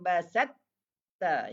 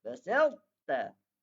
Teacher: Kalau idgham kamil, ada tanda sabdu pada huruf ta. Hilang bunyi ta tu.